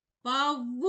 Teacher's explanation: наголошений другий склад вук наголошений голосний у